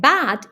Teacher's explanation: when you say the sound b as in b your lips come together before the sound comes out of your mouth